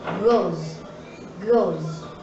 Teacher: in the verb goes, the final sound is a voice sound.